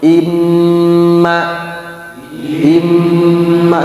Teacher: Jadi mim ketika dia bertasdid ada sifat namanya gunnah. Gunnah itu artinya dengung, ditahannya 2 harokat. Hitungannya pas bunyi amnya.